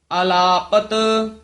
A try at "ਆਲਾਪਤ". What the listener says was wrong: ਆਲਾਪਤ ਉਚਾਰਨ ਕਰਨਾ ਆਲਾਪਤ ਨਹੀਂ ਕਹਿਣਾ ਆ ਤੋਂ ਡੈਸ਼ ਦੇਣੀ ਹੈ